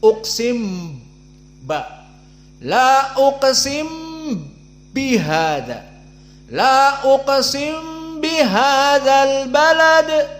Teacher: Uqsim mim sakinah dakhal ilal ba. La uqsim bihadzal balad, ba-nya musyaddadah. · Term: idgham al-kabir